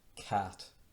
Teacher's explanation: When an Englishman says cat, you can see the E sound in there, cat. But when an Irishman says cat, he says cat, cat, cat, and that's how you pronounce this.